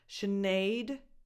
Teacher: the strong stressed syllable, Sinead. Okay, so the weight goes on naid.